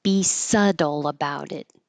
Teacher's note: This is one that looks very different than how it sounds. There's no B sound at all and the T changes to a D.